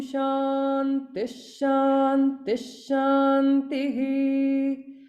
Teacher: Only the last one will have the visarga fully. Shantihi. Om Shantish, Shantish, Shantihi.